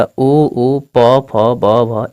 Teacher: अगला है ओष्ठ वर्ण, यानी जिसको बोलने पर हमारी दोनों ओठ आपस में सट जाती है